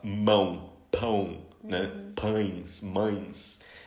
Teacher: Eles não conseguem fazer o som passar pelo nariz, eles fazem o som oral sem nasalidade. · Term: sons nasais